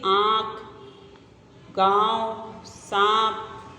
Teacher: अनुनासिक का उच्चारण नाक और गले की सहायता से किया जाता है और इसका प्रयोग चंद्र बिंदु के रूप में किया जाता है · अनुनासिक बिंदु में क्या होता है, देखो, अनुनासिक का उच्चारण नाक और गले की सहायता से किया जाता है